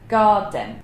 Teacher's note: if I have a stress syllable at the beginning of the word, like garden, we've got a long vowel there, R, we are not going to have another stress following it. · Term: schwa